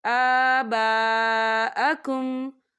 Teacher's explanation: الف مدہ بھی ہو رہا ہے اور اس پر مد بھی ہے تو ہم اسے چار حرکت کے برابر کھینچ کے پڑھیں گے